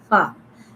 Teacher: This fa pronounced from the wet part of the lip, lower lip, and on it two front teeth on it, like fa.